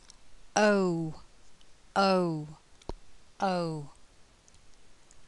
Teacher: the lips become more rounded throughout the sound and the tongue moves from the center of the mouth to the back of the mouth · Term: dip thong